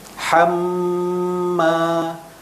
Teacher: dengung dengan kadar panjang dengung dia sepanjang 2 harakat